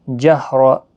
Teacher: را زبر کی وجہ سے پر پڑھا جائے گا